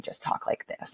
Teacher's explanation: we don't have any vocal pitch range up and down, and it just stays right here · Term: monotone